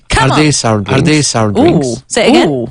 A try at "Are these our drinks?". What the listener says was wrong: You did it so fast. I couldn't understand the R.